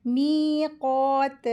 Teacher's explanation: मीम के साथ या मद का रूल हो रहा है, इसको दो हरकत खींचेंगे। काफ के ऊपर खड़ी ज़बर है, इसको दो हरकत खींचेंगे और हैवी लेटर है, इसको हैवी करके पढ़ेंगे।